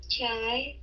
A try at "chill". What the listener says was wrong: No. Chill. Chill chứ không phải chai nha. Chill. Yeah, chill l đó. Cong lưỡi phía sau lên chill.